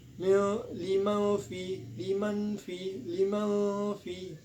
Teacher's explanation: Nah, di sini ada hukum bacaan ikfa hakiki kembali sebab nun mati menghadapi huruf fa